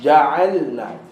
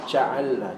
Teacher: Jangan bagi ada angin masuk pada huruf J.